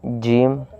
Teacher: جیم جب نکلے گا جب زبان کا درمیان کا حصہ اوپر کے تالو سے ٹکر کھائے